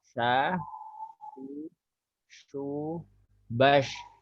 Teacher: Jadi lidah kita agak ditarik ke belakang dan melebar. Jadi sya itu tempatnya di tengah lidah dengan langit-langit.